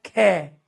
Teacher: ख में वायु क्या है? ज्यादा आ रही है। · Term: महाप्राण